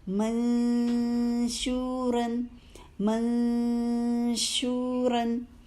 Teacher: منشوراً، دیکھیے کہاں سے شین ادا کریں، اش کہاں لگ رہی ہے زبان؟ اوپر تالو پہ لگ رہی ہے نا، تو وہیں پہ لے کر جائیے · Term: اخفاء